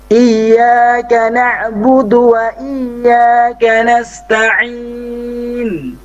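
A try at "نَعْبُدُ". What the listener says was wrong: Ya, agak keluar lagi sedikit untuk posisi lidahnya ke gigi atas ya, gigi sari atas. Du, seperti itu.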